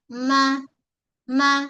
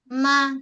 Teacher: Mim adalah huruf bibir. Okey kita rapat kedua bibir kita rapat. Buka ma sentuh dulu ma.